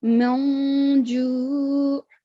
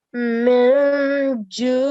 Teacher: you have to conceal the sound of noon